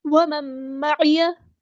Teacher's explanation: नून साकिन के बाद मीम आया है तो इदग़ाम माल गुन्ना होगा